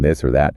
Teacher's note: There's the voice one like in this or that. You should feel a bit of a buzz in your throat.